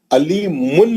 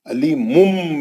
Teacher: علیمن بول کے نون کا آواز نہیں نکالیں گے، اب علیمم میم کا آواز نکالیں گے، غنہ کریں گے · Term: اخلاب